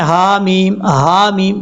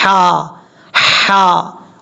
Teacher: اب اس کے بعد ہے حامیم، یہاں پر ہا کے اوپر کھڑا زبر ہے، لیکن یہ جو ہا ہے اس کو آپ نے سمجھنا ہے، یہ ہا بریک ہے، یہ بریک پڑھا جائے گا، اس کو بھاری ساؤنڈ کے ساتھ کبھی بھی نہیں پڑھنا · آپ نے ایسا نہیں پڑھنا اس کو، کیونکہ یہ جو ہا ہے اس کا تعلق گلے کے درمیان سے ہے، سینے کے ساتھ نہیں ہے، یہ گلے کے درمیان سے ہی ادا ہوتا ہے.